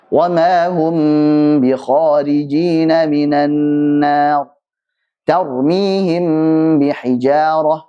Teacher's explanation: Mim sukun ketemu ba, maka jangan sampai terlalu ditekan dua bibirnya. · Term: ikhfa syafawi